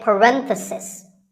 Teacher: This is the proper name for the round brackets that we use in writing. If you talk about just one bracket, you say parenthesis. The stress is on ren.